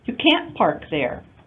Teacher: And you may not hear the T at the end.